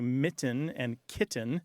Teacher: We have increasing glottalization where there's a place where we've got a T sound surrounded by vowels.